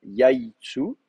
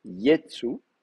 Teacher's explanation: vous allez avoir la contraction de la diphtongue de yai en e. Yetsu. Voilà.